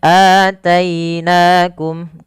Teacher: ada fathah bertemu ya, lembutkan dalam pelafalan ya-nya. Nakum mad tabi'i.